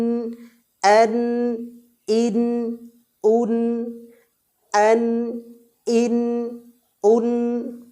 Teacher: জিহবার কিনারা বা জিহবার আগা এবং তার বরাবর উপরের মাড়ির সাথে মিলিত হয়ে নাকের বাঁশি থেকে গুন্নাহের মত উচ্চারণ করতে হয় নুনকে